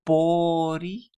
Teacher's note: So again, the emphasis is on the first syllable